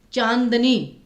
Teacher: चांदनी में न पे फोकस आया, नाक से ज्यादा आवाज निकली, तो इसलिए यहाँ पे आपका अनुस्वार आएगा।